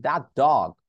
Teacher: আমি কিন্তু টি উচ্চারণ করে দ্যাট বলি নাই